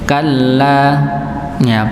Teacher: Sifat nabr. Maka dihentakkan kalla kalla.